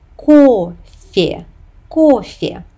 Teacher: Note that the letter Ye makes the previous consonant soft. It's F and not F. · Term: palatalization